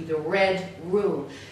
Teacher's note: the r often becomes an L